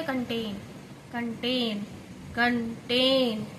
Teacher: कन is unstressed and टेन is stressed part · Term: आयम्बिक पेंटामीटर